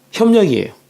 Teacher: 비읍도 미음으로 교체돼, 리을도 니은으로 교체돼, 미음과 니은은 비음이야. 비음으로 바뀌었으니 비음화.